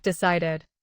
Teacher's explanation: Decide ends in d, the special trigger, so the ending becomes id. Say decided with three beats. In a normal sentence, keep the final syllable short.